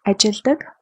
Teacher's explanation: Even though we write it ажилладаг, ажилладаг with double L, we pronounce it ажилладаг with one L